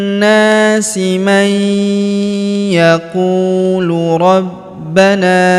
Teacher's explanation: huruf ba kita tahan dan kita tekan karena terdapat tanda tasydid di atasnya